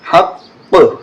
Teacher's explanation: وقف کریں گے تو بالحق اس طرح ہو جائے گا اور قلقلہ ہوگا